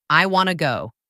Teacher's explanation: Want to often becomes wanna. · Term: natural reductions